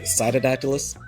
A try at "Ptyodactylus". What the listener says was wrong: The P is silent. It's just Ptyodactylus. Ptyodactylus. Ptyodactylus. I mean, you can say Tyo, you can say T-O, either way. The P, anytime the P comes before like a weird letter, like Tenepus, like the little barking geckos, P is silent, straight to the T.